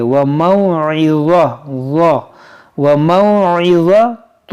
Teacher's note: ظ حروف مشتعلیہ ہے, اس کو موٹا پڑھیں گے اور نرمی سے پڑھیں گے